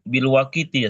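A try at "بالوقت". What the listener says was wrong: bil waqti bukan waqiti waqti bisukunil waw dengan sukunnya waw.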